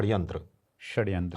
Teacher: तो आधा श उच्चारण और आधा स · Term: मिश्रित उच्चारण